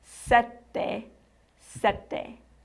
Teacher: Remember from the numbers video, there were two T's in the number 7, sette. You rest slightly longer on those T's.